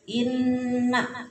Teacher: Jadi ditahan, didengungkan kira-kira 2 harokat. Kadang ada yang sampai 3 harokat. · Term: Gunnah